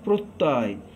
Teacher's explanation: যখন আমরা বলছি প্রত্যয়, আমাদের সময়টা বেশি লাগছে এবং মুখের ভাগটা অনেক বড় হচ্ছে। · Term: বিবৃত